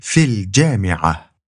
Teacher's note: you skip that first a sound in al jami'a and you just say fil jami'a. That little eagle's head basically just tells you to skip the alif.